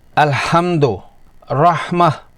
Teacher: اسے ادا کرتے ہوئے حلق کے درمیانی حصے سے ہلکی اور صاف سانس کے ساتھ آواز نکالی جاتی ہے۔ حلق کے بیچ سے بغیر کسی سختی یا رگڑ کے تلفظ نرم اور صاف ہوتا ہے، جیسے سیڑھیاں چڑھتے ہوئے کسی کا سانس پھولتا ہے تو آواز نکلتی ہے۔ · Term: حرف ہا